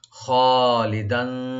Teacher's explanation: খাটাকে deep করে একালিফ টানবেন , লি বলবো, দালের উপর যে তানবিন আছে আমরা ইখফা করব,